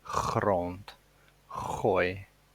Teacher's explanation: in Afrikaans and in Dutch we also have this super hard G